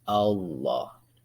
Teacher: lam tafkhim dibaca berat atau sering disebut lam jalalah